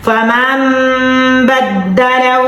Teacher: ہم نے غنہ کرنا ہے میم میم زبر مم کرنا ہے نون ہم نے نہیں پڑھنا